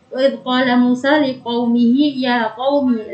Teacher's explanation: Kita bahas dari wa idz qala Musa liqaumihi ya qaumi, 5 itu jangan lupa di situ tidak ada huruf alif, tidak ada ketambahan alif, jadi dia tidak panjang.